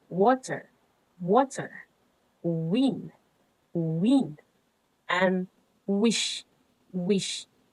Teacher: Why is it bilabial and velar? Because it is made by rounding the lips while the tongue moves near the soft palate